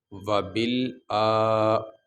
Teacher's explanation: یہ حمزہ اس کے اوپر کھڑی زبر ہے، اس کو لمبا کریں گے